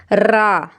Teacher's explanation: रा जिस तरह मैं बोल रही हूं मेरी आवाज में रगड़ आ रही है